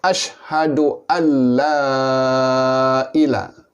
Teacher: Maka sebaik-baiknya la ini dibaca panjang, boleh sehingga 6 harkat. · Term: mad ta'zim